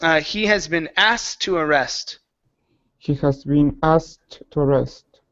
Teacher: take out the k sound and move straight to the T